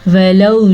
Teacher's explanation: फिर से वाव को नरम पढ़ेंगे क्योंकि ये वाव लीन है, खींच के नहीं पढ़ेंगे। मद का ध्यान रखेंगे।